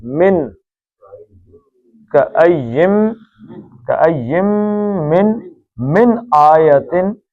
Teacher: اب یہ من ہے، نون ساکن کے بعد حمزہ آ گیا ہے، تو نون ساکن کے بعد حمزہ ہلکی ہے تو نون کا اظہار ہوگا